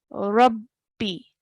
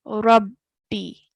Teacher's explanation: And when we say it, we have to really emphasize on the ba, Rabbi. straight away joining the ra to the ba with force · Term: shadda